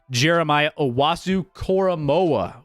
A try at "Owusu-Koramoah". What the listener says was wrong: I think it might be Owusu, but I think you said Owasu.